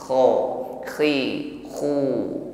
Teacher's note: alirkan bunyi huruf kha, sifatnya rakhawah jarayan shaut inda nutqi bil harfi, bunyi hurufnya mengalir ketika diucapkan.